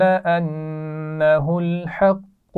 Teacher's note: انہ الحق ملا کر پڑھے جا رہے ہیں. انہ کے نون پر غنہ بھی ہو رہا ہے